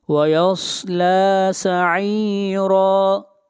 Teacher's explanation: صاد کو موٹا پڑھیں گے، لام کو کھینچ کر پڑھیں گے ایک الف کے برابر اور را کو موٹا پڑھیں گے